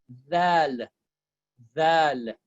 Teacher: We said yesterday, for the Dal, you are basically touching your front of your tongue to the top teeth and saying Dal, Dal.